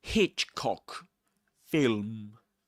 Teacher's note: Hitchcock, you stress Hitch.